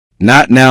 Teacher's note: Not now may contain a very short closure instead of a clearly released T.